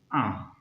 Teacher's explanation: अनुनासिक आ, और इसे आ, क्योंकि मुख और नासिका से बोले जाते हैं